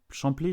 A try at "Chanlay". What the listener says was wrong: Oui, alors quand on est de Lyon, on dit Chanlay, on ne prononce pas le P.